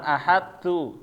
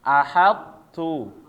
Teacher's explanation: jangan langsung to-nya hilang. Sifatnya to-nya tetap tebal.